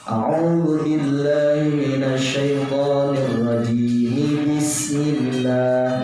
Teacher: Nah, cara menyambung atau mewasal seperti itu salah, karena pada saat membaca ta'awudznya dengan diwaqaf, diberhentikan jim, tetapi dilangsungkan bismillah. Nah, kalau mau diwasalkan maka bunyikan mi, yaitu mimnya berkasroh dibaca